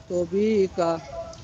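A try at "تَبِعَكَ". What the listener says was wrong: তা হবে, তবই হবে না। যখন তর উপরে জবর হবে তখন হবে ত হবে। এটা হবে তাবি আ কা।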